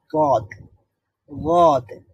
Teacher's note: জিহ্বার গোড়ার একটা পার্শ্ব, এটা উপরের দাঁতের মাড়ির সঙ্গে লাগিয়ে উচ্চারিত হবে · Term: দদ